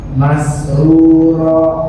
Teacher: Mas ngalirnya nggak ada penghalang sama sekali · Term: huruf sin